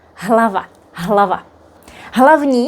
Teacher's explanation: You may notice that here the H is not as strong as if we had a vowel after it